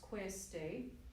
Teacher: So the main vowel that you're sustaining on in the word queste is A, right? But you've got an oo glide.